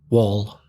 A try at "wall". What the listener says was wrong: your vowel sounds a bit wider